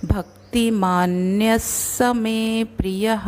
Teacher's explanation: य के बाद ये जो विसर्ग है वो चरण के बीच में है, इसलिए अगला वर्ण स के समान हम उसको बोलेंगे। भक्ति मान्यस्य मे प्रियः, या प्रियः लास्ट में है इसलिए हा।